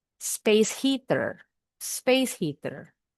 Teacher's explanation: There isn't a break in between words. What may be helpful is to picture that final consonant sound.